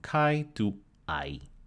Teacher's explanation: kai had a glottalization of the first sound and went from chi to i